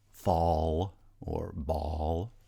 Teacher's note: the dark l which has this little curl on it the velarized alveolar lateral approximant